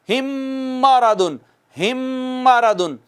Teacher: ہم کی پہلی میم نہیں پڑھی جائے گی، اب ہا جو ہے ڈائریکٹ اگلی میم پہ جائے گا، چونکہ یہ میم اس میں آ چکی ہے، اس میں ادغام ہو چکا ہے۔ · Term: ادغام شفوی